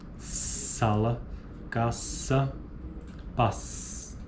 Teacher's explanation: Uniforme em todos os dialetos do português brasileiro. S, fricativa alveolar desvozeada